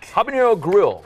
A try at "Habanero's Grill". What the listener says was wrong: Habanero's Grill. Sorry, we've been saying it wrong amongst ourselves. It's Habanero's, as in it's the possessive of habanero. Habanero. Habaneros. There's an apostrophe S. It's possessive of habanero.